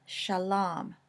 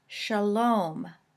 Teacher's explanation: an original long a in the Canaanite languages shifted to a long o sound when it was accented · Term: Canaanite shift